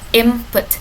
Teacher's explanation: it is assimilation because the two sounds N and M is becoming more alike